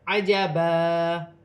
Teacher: وقف کی صورت میں دو زبر کی تنوین ایک الف مدہ میں بدل جائے گی, جیسے عجبا.